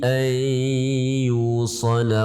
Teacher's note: itu adalah idgham bi gunnah, kita baca dengan mendengung ya